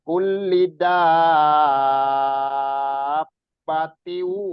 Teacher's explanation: ya, mat lazim mustaqol kalimi. Jadi ada matobi'i bertemu dengan huruf yang bertasdid. Ini bacanya sampai 6 harokat.